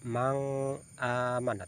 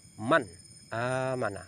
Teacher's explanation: bacanya jelas nun mati bertemu dengan alif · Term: izhar halqi